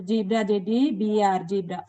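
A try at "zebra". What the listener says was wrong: నీకు RA problem ఉంది, ఏడన్నా డాక్టర్ కాడ చూపించుకో. అల్ట్రా కాడ ఏం బొక్క పెట్టుకుంటావో జీబ్రా కాడ కూడా అదే బొక్క పెట్టుకున్నావు అంటే అర్థమేమి, నువ్వు ఒకటి వేలో వెళ్తున్నావు. ఏందో అదేమో BR TR అనుకుంటున్నావు. తప్పుమ్మా.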